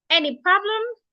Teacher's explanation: you have to use a rising tone because it is a yes or no question